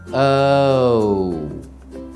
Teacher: if you were listening carefully you should have heard uh and ooh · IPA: /əʊ/